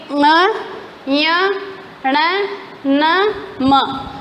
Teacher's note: सभी के सभी नाक से बोले जा रहे हैं, इसलिए ये पांचों के पांचों नासिक हैं। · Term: पंचमाक्षर